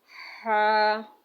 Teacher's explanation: اب ہا ہے، ہم نے اس کو 2 الف کی مقدار میں کھینچنا ہے